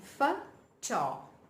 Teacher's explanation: it's one single word with the stress on TO.